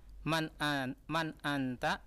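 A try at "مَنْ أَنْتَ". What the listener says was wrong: Nah, kenapa di anta? Kenapa ditekan?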